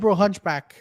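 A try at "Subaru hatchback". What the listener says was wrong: Hatchback, not hunchback. You said a Hunchback.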